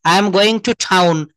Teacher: টাউনটাকে আমরা ঠাউন বলব। আই এম গোইং টু টাউন।